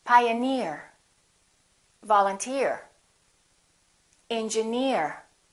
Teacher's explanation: if the word ends with e e r we stress the suffix